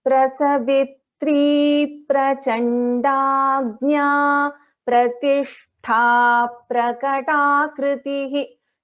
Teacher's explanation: So for example here, Prasavitri, here third is getting doubled, and here because we are chanting these two names together, again pa is getting doubled. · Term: dvitvam